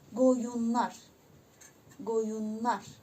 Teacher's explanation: Deməli, sözün sonu n samiti ilə bitərsə, daha doğrusu sözün sonu n hərfi ilə bitərsə, bu zaman lar-lər şəkilçisi nar-nər kimi tələffüz olunacaq